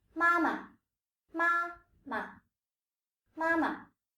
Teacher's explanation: Take for example the word mother, mama, mama. The first sound is a first tone, while the second is a neutral, which is lighter and shorter.